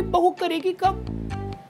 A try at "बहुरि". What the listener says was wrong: बहुरी बहू नहीं बहुरी।